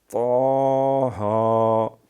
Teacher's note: اور یہ ہا 2 آنکھوں والا جو ہوتا ہے، یہ ہے ہا حلوے والا نہ بن جائے۔ طٰ میں تھوڑا سا پچاکا ہوتا ہے، یہ حروف قلقلہ میں سے ہیں